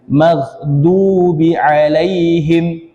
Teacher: G juga ini bukan Qalqalah ya gho ini tidak dibaca memantul bukan magdubi ya salah ya mag Ya hanya ditahan dan sebagian